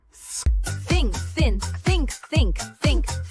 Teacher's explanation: For TH, your tongue gently comes between your teeth. Push air out slowly. No voice, only air. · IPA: /θ/